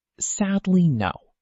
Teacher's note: In this short phrase, the syllables sad and no receive the stress, while the middle syllable is weaker.